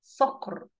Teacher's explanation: والقاف برضك في كلمة صقر مفخمة